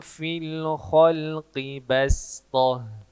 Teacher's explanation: Kebetulan huruf sodnya berharokat sukun, maka huruf sodnya diganti huruf sin, dibaca bastoh. Yang semestinya balstoh, tebal.